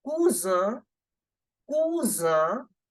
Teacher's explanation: S is between two vowels, so we have to make the sound of Z.